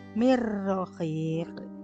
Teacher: Nun matinya tidak terbaca karena lebur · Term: idgham bila gunah